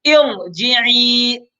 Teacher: اصول تو یہی ہے، عام قرآن عام اصول تجوید کا یہ ہے کہ اگر را ساکن سے پہلے زیر ہو تو باریک کر لیتے ہیں، لیکن یہاں پر بھی را ساکن سے پہلے اگرچہ زیر ہے ارجعی، لیکن یہاں پر بھی را کو باریک نہیں پڑھیں گے بلکہ را کو پر پڑھیں گے، موٹا کر کے پڑھیں گے